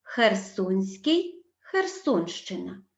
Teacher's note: СК змінюється на шч